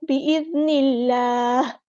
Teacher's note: बिइज़्निल्लाह हमज़ा की आवाज़ को वाज़ेह अदा करें, ज़ाल बारीक नरमी से अदा करेंगे, नून को अपने लाम के साथ मिला देना, हमज़ा से ड्रॉप हो जाएगा और हा को हम साकिन कर देंगे वक़्फ़ करते हुए।